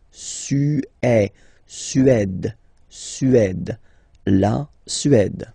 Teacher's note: Remember, accent grave, it's really open.